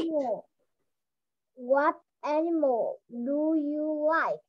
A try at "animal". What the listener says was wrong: Ok, thank you con, được rồi đó.